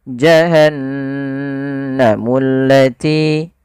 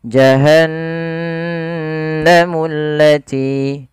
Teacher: Gunnah yaitu membunyikan suara hingga masuk ke rongga hidung kita. Maka suara nunnya dimasukkan ke rongga hidung.